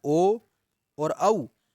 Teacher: अब अगला है ओ दौतो कंठोष्ठम, अर्थात ओ और औ, इन दोनों का उच्चारण स्थान कंठ और ओष्ठ दोनों है